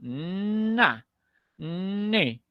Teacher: nivel quiere decir que cuando tú pronuncias la nane la ni la lengua se eleva y toca los alvéolos